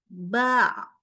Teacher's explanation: bunyinya enggak full mengalir ya. Ada suara tapi kecil. Kenapa? Karena suaranya itu tertahan.